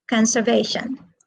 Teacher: where is the stress conservation it is on the third syllable